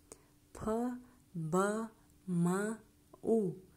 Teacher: Екі еріннің бір-біріне жабыса тиісу арқылы жасалатын М, Б, П еріндік дауыссыздар деп аталады